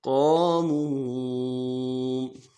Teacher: علیہم قاموا، قاموا، قاف کے بعد الف مدہ ہے، موٹا کریں گے قاف کو، الف مدہ کو ایک الف دار میں کھینچیں گے. منہ میں واو مدہ ہے، اس کو بھی ایک الف دار میں کھینچیں گے